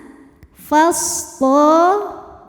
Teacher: shadnya punya sifat namanya shofir. Ada desisan